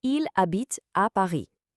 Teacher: the verb habite, which by the way has a silent h at the start, and the city Paris.